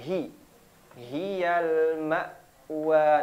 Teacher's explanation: huruf Ha Di mana huruf ha sama seperti Hamzah di mana tenggorokan bagian bawah